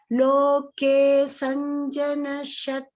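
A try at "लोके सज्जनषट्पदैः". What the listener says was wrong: Not Sanjana. Sajjana. There is no N over there.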